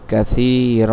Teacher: তাহলে দেখুন দুই জবরের বামে অক্ফ করার কারণে আমরা কি করব না, দুই জবর পড়ব না, বরং আমরা এখানে এক আলিফ টানিয়া পড়ব